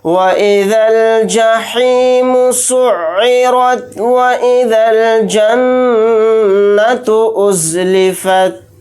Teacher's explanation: یہاں پر را کو موٹا یعنی پر پڑھیں گے، نون کے اوپر تشدید ہے تو اس کے اندر غنہ کر کے پڑھیں گے